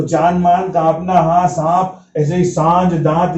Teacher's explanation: दीर्घ स्वर है तो चंद्र बिंदी आएगी और एक उसकी अनुनासिक ध्वनि निकलेगी नाक से स्वर के साथ में